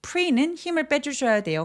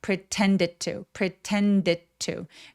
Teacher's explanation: Pre는 힘을 빼 주셔야 돼요. 강세가 오지 않으니까.